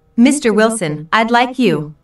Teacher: notice the rising intonation on Mr Wilson which is used to address someone